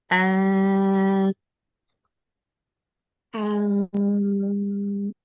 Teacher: Ah, a nah, sekarang sama dengan kita membaca A, tapi ada yang dikeluar dari hidung